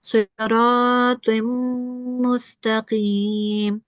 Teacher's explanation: we will make a 2-second nasal sound. Sustained nasal sound. So carrying on for 2 seconds.